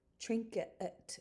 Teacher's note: You see this in train, where you often, because of the movement of the mouth, you have the TR sounding a little bit like a ch. You have a nasalization of the I, and your final vowel can turn into a slight schwa.